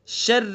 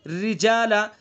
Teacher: را کے نیچے زیر ہے تو اس لیے را کو باریک پڑھیں گے